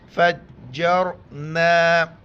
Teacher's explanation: را ساکن ہے، اس سے پہلے جیم پر زبر ہے تو را کو موٹا کر کے پڑھیں گے